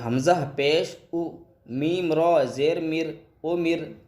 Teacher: را ساکینہ سے پہلے زیر ہو تو را ساکینہ باریک ہوگی. تو یہ باریک یعنی کہ پتلا کر کے پڑھیں گے کہ حمزہ پیش او، میم را زیر مر، امر.